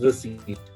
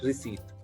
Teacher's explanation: you don't pronounce the letter p there